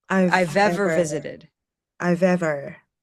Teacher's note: So you'll often hear this link, I've ever, and it's the V to the V, I've ever.